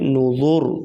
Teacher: وقف کی صورت میں را پر موٹی پڑھی جائے گی۔ نوذوری یہاں پر وقف کریں گے، نوذور تو را ساکن ماقبل پیش، تو را کو پر پڑھا جائے گا موٹا۔